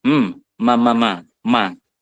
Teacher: mim itu merupakan makhraj yang keluar dari asyafatain dari kedua bibir yang dikatupkan